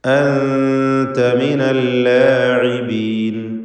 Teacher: സാക്കിനത്തായ നൂനും ശേഷം താവും ഇഖ്ഫാ ഹഖീഖി മറച്ചു മണിച്ചുച്ചരിക്കുക